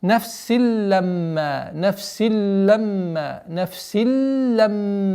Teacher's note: Нафсиль, нафсиль. А здесь у нас правило танвин встречается с лямом, правило идгам без назализации, с ассимиляцией. · После удвоения уходим на назализацию мим в размере двух огласовок, после которой долгота в размере двух огласовок фатхи.